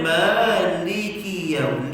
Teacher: li tu tuan-tuan kena ringankan bunyi dia, supaya tuan-tuan tak masukkan li tu dalam kaf, jadi sabdu pula. Contohnya maliki yaum, jangan keras gitu, longgarkan li tu.